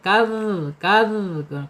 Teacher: Sangat rawan zal ini, jangan kadzabtam kaz ya. Makhrajnya ada di ujung lidah menyentuh ujung gigi seri ya. Za keluarkan sedikit